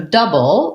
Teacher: So double, first syllable stress. And then we have the BLE, which is a B plus a syllabic L. So syllabic L means I'm saying just the L sound and there's no vowel, but it still functions as a syllable.